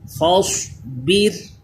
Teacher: فاصبر، یہ را بھی باریک ہوگا کیونکہ زیر اصلی اسی کلمے میں را ساکن سے پہلے آ گیا۔ صاد پر کیجئے، را کو باریک